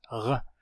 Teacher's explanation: Esse r do alemão de Berlim pronunciado aqui atrás